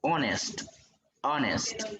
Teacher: Inicia con un sonido de vocal, no es solo porque inicie con una vocal la palabra escrita, sino que por el sonido de la vocal a la hora de pronunciarla.